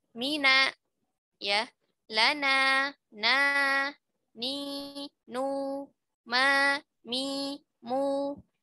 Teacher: Jadi salah ketika kita mengatakan kalau mim berharokat, ya, dalam keadaan mim biasa berharokat tidak ada gunnahnya, salah. Tetap ada gunnahnya, hanya tingkatannya adalah tingkatan yang paling rendah, paling kurang. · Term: gunnah anqos